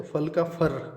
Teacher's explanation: इसमें र और ल का जो आपस में जो भेद है वो हट जाता है, उसकी जगह दोनों एक दूसरे की जगह पे इस्तेमाल होने लगते हैं।